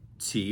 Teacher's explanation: this is a rising tone second tone